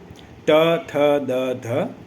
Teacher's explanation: જ્યાં તમારી જીભ દાંત ને અડે છે